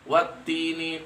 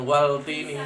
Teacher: Maka cara membacanya adalah menghilangkan suara al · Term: idgham syamsiyah